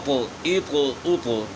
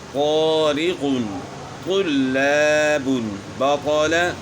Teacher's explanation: طا کو موٹا پڑھنا ہے اور اس میں قلقلہ بھی ہوگا۔